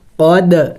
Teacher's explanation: قد دال حروف قلقلہ میں سے ہے ساکن ہے تو قلقلہ کریں گے یعنی ہلا کے پڑھیں گے